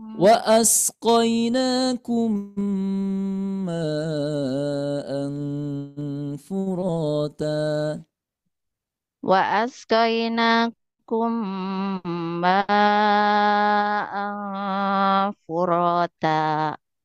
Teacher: Idgham mislainnya ini, idgham mimi ya. Tahan dulu. 4 ketukan.